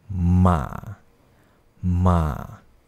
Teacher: Nada yang ketiga ialah turun kemudian naik.